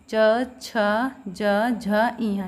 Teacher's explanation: और इन 5 का जो उच्चारण स्थान क्या है, तालु, ठीक है। अगर हम इनको प्रोनाउंस कर रहे हैं, इनको बोल रहे हैं, तो हमारी जो जीभ है वो हमारे तालु को स्पर्श कर रही है